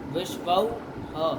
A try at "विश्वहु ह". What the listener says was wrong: हाँ, तो उसको बोलो ना, ह को काहे नहीं बोलते हो? हाँ, विश्वऊ अस, क्या स्थिति बनेगी? अरे कुछ नहीं किया, अ और ऊ को औ कर दिए, तो अ तो बना रहेगा ना, उसको काहे खा जा रहे थे?